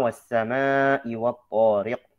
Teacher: dijaga ketebalan huruf ta. Huruf ta punya sifat isti'la, punya sifat itbaq ya.